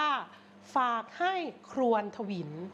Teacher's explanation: คำว่าถวิลนะคะเป็นเสียงจัตวานะคะไม่มีรูปวรรณยุกต์นะคะ